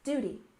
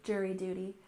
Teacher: We stress the first syllable in jury, jury, and the first syllable in duty